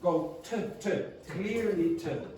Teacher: pronounce the t like t. Don't change it to what's called a flap.